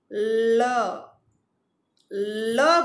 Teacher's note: જીભ છે એ દંત્ય સ્થાનને સ્પર્શે છે અને હવા બંને બાજુથી પસાર થાય છે, મુખની બંને બાજુથી હવા પસાર થાય છે, એટલે એને આપણે પાર્શ્વિક વ્યંજન કહીએ.